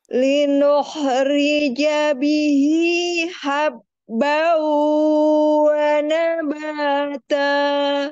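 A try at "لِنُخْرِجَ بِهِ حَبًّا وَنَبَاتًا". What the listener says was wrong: Wa nabata. Turun, sedikit turun. Titik kuncinya berarti tadi, Bu, harus lepas. Jadi memang suara itu harus lepas, Bu.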